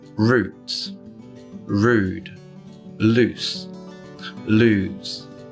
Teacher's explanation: before voiceless consonants that close a syllable, long vowel sounds do become a bit shorter, and this does happen to the close back rounded vowel.